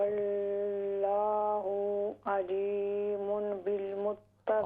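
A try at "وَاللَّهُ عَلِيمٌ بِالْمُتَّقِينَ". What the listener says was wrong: अलीमुम, ये दरमियान में छोटा सा मीम नजर आता है ना, तो ये पढ़ना है आपने, अलीमुम बिल मुत्तकीन।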